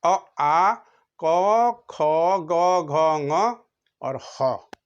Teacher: ना दांत को कुछ करना पड़ रहा है, न जीभ को कुछ करना पड़ रहा, सीधे कहाँ, ये कंठ से बोले जा रहे हैं।